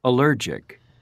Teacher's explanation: the emphasis is on the second syllable that's the most common but it is not always the case